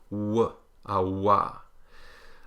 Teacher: the labial velar, meaning lips rounded, back of tongue up